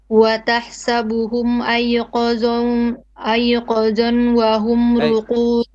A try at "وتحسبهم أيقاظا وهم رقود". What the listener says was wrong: أيقاظا وهم. Long vowel. أيقا. أيقاظ. ظن. Okay, and then you have to merge it. أيقاظا وهم رقود. أيقاظ. It's فتحتين. ظن. ظن. أيقاظا وهم رقود. Sister, it's not ذو, it's فتحتين, okay? أيقاظ. Like qa and dha, okay?